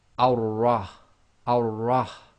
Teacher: So we're going to effectively completely skip the lam. So we're going to join the fatha, which is going to be on top of the wasla, and join that to the ra.